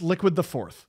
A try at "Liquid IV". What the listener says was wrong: Oh, it's not liquid the fourth. IV.